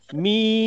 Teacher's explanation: ইয়া সাকিন থাকার কারণে এই জের যুক্ত অক্ষরটাকে টেনে পড়ব।